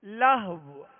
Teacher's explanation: آخر میں ہونٹ گول کر کے واو پر آواز اور سانس توڑ دیں گے، واو کو ساکن کرتے ہوئے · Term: وقف